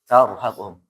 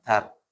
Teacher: Ra sebelumnya fathah. Apa hukumnya? Tafkhim. Tebal ya.